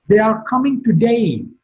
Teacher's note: Today is marked with a falling tone